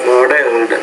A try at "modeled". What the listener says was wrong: In the word modeled, you want to put that stress modeled on that first syllable, not muddled, but modeled.